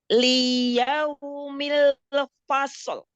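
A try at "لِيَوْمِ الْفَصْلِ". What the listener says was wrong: Lam kasrohnya jangan dipanjangkan harokatnya. Liyaumil Jangan liyau kepanjangan. Langsung. Fa-nya tipiskan dulu, sodnya baru tebal, lalu tahan sifatul huruf pada sod. Fasl. Lamnya tipis lagi.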